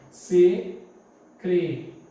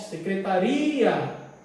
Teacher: Vocês vão notar que o I, ele é forte.